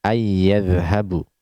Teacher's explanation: Nah, tidak kita mengatakan anya, tidak kita katakan anya dengan izhar, tapi kita idghamkan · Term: hukum idgham